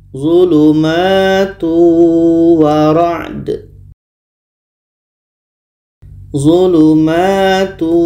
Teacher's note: Hukumnya adalah idgham bi gunnah. Maka bunyi tanwin masuk kepada wa dan ada dengungnya.